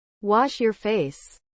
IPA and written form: wɒʃ jɔːr feɪs (Wash your face)